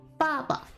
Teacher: So you don't want to get Baba confused with ba ba, because it's not using both fourth tones. It's only using one fourth tone for the first ba and then a light tone for ba. · Baba uses the fourth tone going down and then to a neutral tone. So you don't want to get Baba confused with ba ba, because it's not using both fourth tones.